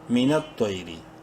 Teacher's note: تو کو منہ بھر کے پڑھیں گے، بولڈ لیٹرز میں سے ہے لیکن شارٹلی کیونکہ یا لین ہے